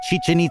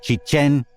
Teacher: the name is Chichen accented on the second syllable · Most people say Chichen Itza, with the accents on the first syllable of both words. The name is Chichen Itza, accented on the second syllable